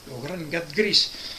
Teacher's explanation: que és un G verdaderament occlusiu